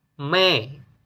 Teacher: seperti huruf E yang terbuka